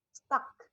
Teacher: kalau di lidah itu dia posisinya mid back. A, mulut dibuka lebar.